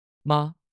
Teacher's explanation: 第一声要高，声音要平